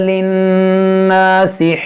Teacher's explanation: यहाँ नून में गुन्ना करेंगे